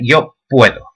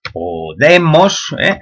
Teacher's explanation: Hay una diptongación, puedo, en esta forma fuerte, que se dice, en la que el acento va en la raíz, y una forma adiptongada, con una simple O, en las formas en las que el acento recae en la desinencia.